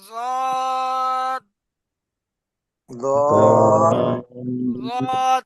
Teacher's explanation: ضاد ضاد অর্থাৎ জিভের কিনারা উপরের মাড়ির দাঁতের গোড়ার সাথে লাগান।